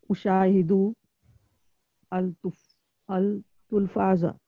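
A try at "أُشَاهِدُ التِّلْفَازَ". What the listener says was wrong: Listen, we have Shadda here. When we have Shadda, Alif Lam becomes silent. You need to join Dal with Ta. Ushahidut Tilfaza.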